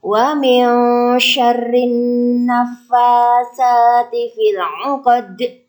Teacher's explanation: huruf dal dibaca qalqalah kubra karena mati di akhir ayat.